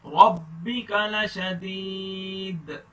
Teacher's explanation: دال پر جھٹکا دینا ہے, کلکلا کرنا ہے.